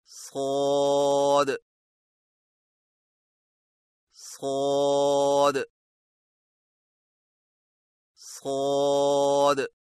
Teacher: صاد کی ادائیگی میں زبان کی جڑ کو اٹھا کر موٹی آواز میں پڑھیں